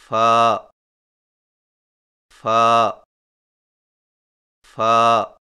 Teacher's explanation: فا کی ادائیگی میں سامنے والے اوپر کے دو دانتوں کے سروں کو نچلے ہونٹ کے گیلے حصہ پر لگا کر باریک آواز میں پڑھیں